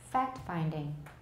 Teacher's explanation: So we don't omit it, and we don't make it especially clear. Instead, there is probably a small T gesture in which the tip of the tongue moves up slightly